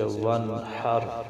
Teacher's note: نون ساکن ہے، اس کے بعد جو حا ہے یہ حروف ہلکی میں سے ہے، تو اس لیے یہاں پر غنہ نہیں ہوگا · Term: اظہار